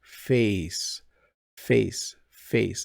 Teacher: It starts almost like an A and flips a little bit to an E.